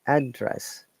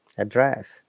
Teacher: So one of them is noun, address, and another one is verb, address. So when it's noun, we stress in the first syllable, address. When it is verb, we stress in the second one